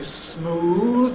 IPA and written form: smuːð (smooth)